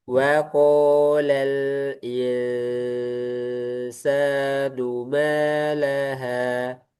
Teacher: Wa ko wa tipis kof tebal wa ko jangan wo ko tapi wa ko.